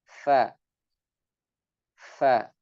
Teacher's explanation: Huruf fa ini terucap dari bibir bawah atau istilahnya perut bibir bawah. Jadi bukan bagian perut bibir ini bagian dalamnya ya, bukan bagian luarnya, tapi yang bagian yang tidak terlihat dari depan.